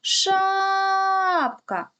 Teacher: який звук ми протягуємо найдовше перший звук а він стоїть у першому складі тобто перший склад у слові шапка наголошений